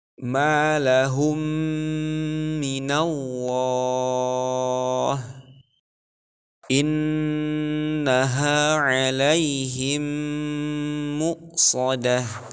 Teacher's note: Maka ketika membaca idgham mithlain, huruf mim yang kedua menjadi bertasydid karena huruf mim sukun yang pertama dimasukkan ke dalam huruf mim yang kedua